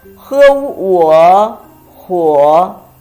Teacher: It's a combination of he and wo, third tone.